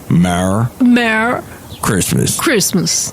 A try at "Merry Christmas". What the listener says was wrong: That sounds like a mare, like a horse. You're saying mare. You're not saying Mary. You're saying mare.